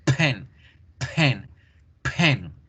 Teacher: En inglés debíamos generar ese sonido con fuerza, el de la P, porque genera una explosión.